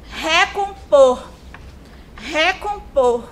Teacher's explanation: Percebam que eu utilizo mais força para falar o por. O por é a sílaba tônica dessa palavra, certo?